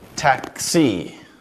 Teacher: The x here actually has two phonemes, the k and s.